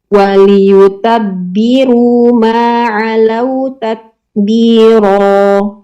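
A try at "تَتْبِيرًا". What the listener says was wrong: Tak, sukun belum nambah, harus tat. Kurang. Tat. Ada sedikit diperbanyak. Coba ganti jadi hamzah a. At.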